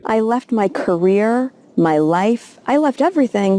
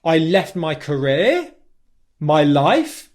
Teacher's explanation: she stresses the words left career and life left has less stress than career and life because these are the two main things that she's trying to